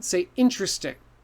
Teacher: So this is a really common one that people will say 4 syllables when they only need 3